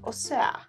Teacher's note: los fresas, the posh ones, they have a very particular way of pronouncing it. It's like more elongated, like, o sea.